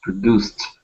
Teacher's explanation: we're going to add that D at the end, and that is going to be a T sound.